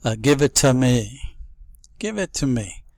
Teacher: this is a dropped ending T very very common